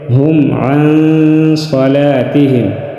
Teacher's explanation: عن نون ساکن میں غنہ کریں گے